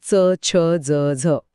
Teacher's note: कठोर टाळू लागते तिथे जीभ लागली की तालव्य